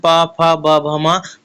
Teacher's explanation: ए आपका तालब में आएगा नेक्स्ट है ओ ओस्ट व्यंजन तो ओस्ट में आपका प वर्ग आता है